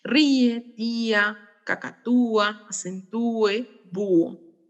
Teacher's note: como la cerrada es la tónica hay un hiato